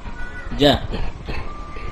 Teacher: Jim maftuha ja. Jim makhrajnya adalah wasatul lisan, tengah lidah ditempelkan ke langit-langit.